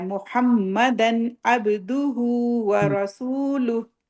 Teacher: وَأَشْهَدُ أَنَّ مُحَمَّدًا، واشہد ان اب یہ تنوین آ رہی ہے اس کے بعد عین ہے، تو اس کو ہم نے یہ سیدھا کلیئر پڑھنا ہے۔